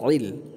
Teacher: আইন কে কণ্ঠনালীর মাঝখান থেকে উচ্চারণ করতে হবে ইল খেয়াল রাখবেন যাতে করে ইল মা হামজা না হয়ে যায়